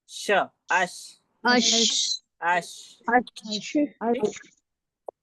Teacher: उसके बाद मैंने बताया आपको शीन का मखरज। शीन का मखरज जबान के बीच उसके मुकाबिल ऊपर के तालू से।